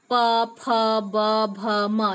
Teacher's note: जब प, फ या ब जो भी बोलते हैं तो इसमें क्या होता है, दो ओंठ हमारे आपस में जुड़ते हैं और ये स्वर उत्पन्न होता है, आवाज उत्पन्न होता है, और इसलिए पवर्ग का उच्चारण स्थान ओष्ठभ्य है।